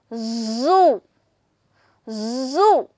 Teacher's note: you can see your throat here it is it is actually vibrating you can see the buzzing sound